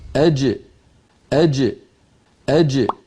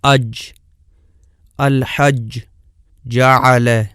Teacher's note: زبان کا درمیانی حصہ اور اوپر تالو کے درمیان سے جیم ادا ہوتی ہے، اور ملاحظہ فرمائیں کہ اس کا مخرج بالکل بند ہو جاتا ہے۔ اج، الحج، جعل۔